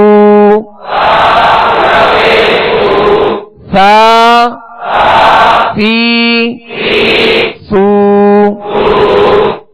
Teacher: सीन और सौद, इन दोनों में सख्ती यानी सीटी जैसी आवाज है